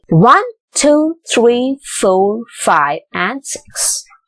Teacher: you use rising intonation to list out things all except for the last part